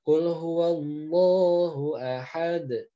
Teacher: yang membuat dia tebal hanya satu alasannya karena pangkal lidahnya naik seperti itu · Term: lam tafkhim